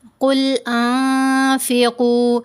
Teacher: انفقوا ہم نے نہیں پڑھا کیونکہ نون ساکن کے بعد فا ہے، فا حروف احفا میں سے ہے، تو ہم نے یہاں پر نون کی آواز کو ناک میں چھپا کر پڑھا، اور 2 حرکات کی مقدار ہم نے نون کی آواز کو ناک میں ہولڈ بھی کرنا ہے